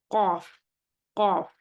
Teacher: अब क़ाफ की अदायगी देखिए, क़ाफ a letter with इस्तेला and इन्फ़िताह। इसमें इस्तेला तो है लेकिन इत्तबाक़ नहीं है, इन्फ़िताह है।